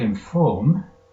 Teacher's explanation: In the word inform, the or is stressed.